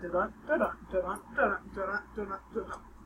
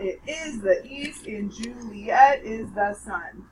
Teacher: notice how every other syllable is emphasized when you say it out loud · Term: iambic pentameter